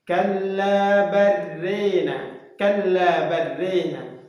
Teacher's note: Membaca di antara fathah dengan kasrah, alif dengan ya. Ya, dibaca secara mutawassit, pertengahan antara alif dengan ya, fathah dengan kasrah. · Jadi huruf lam sukun bertemu dengan ra, maka dihukumi idgham. Ya, harus dibaca idgham, ya, dimasukkan lam sukunnya ke dalam huruf ra, kemudian disertai dengan ada fathatul ra wal alif. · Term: imalah